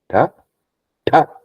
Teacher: My tongue is bending and then touching the front of my soft palate. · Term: cerebrals